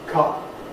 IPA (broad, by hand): kʌp